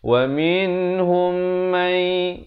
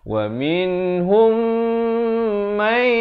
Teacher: Yang betulnya wa minhum may, hum dua harakat, kemudian may di sini juga masuk beserta dengung